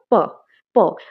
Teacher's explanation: তারপর আস্তে করে এটা রিলিজ হচ্ছে এয়ারটা রিলিজ হচ্ছে কিভাবে হচ্ছে প্রথমে বন্ধ হচ্ছে তারপর আস্তে করে রিলিজ হচ্ছে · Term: স্টপ